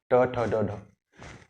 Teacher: ट ठ ड ढ अगर जब आप बोलें ट ठ ड ढ, तो आपके जीभ का जो सिरा है, जो कोमल हिस्सा है, वो दांत और तालू के बीच को टच करता है, ये कहलाते हैं मूर्धन्य।